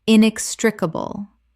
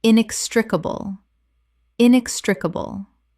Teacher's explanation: Five syllables with the stress on the second